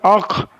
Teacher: अलिफ खा ज़बर अख अलिफ लगा कर पढ़ने से मालूम चला खा हल्क के ऊपर वाले हिस्से से अदा होता है।